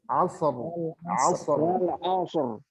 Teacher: ro itu disentuhkan di gusi atas, harus menyentuh.